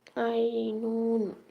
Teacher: আইন গলা চিপে উচ্চারিত হবে আইনুন